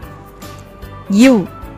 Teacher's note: மேல்வாய்ப்பல்லை கீழ் உதடு பொருந்துவதால் பிறக்கிறது